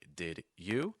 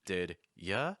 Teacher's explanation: The simplest reduction that we can use that will still sound very natural is to make the U into a Y sound. This will involve then linking everything together with a fast D.